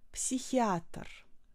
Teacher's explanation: vous soufflez l'air entre la racine de votre langue et le palais, et ça vous fait H.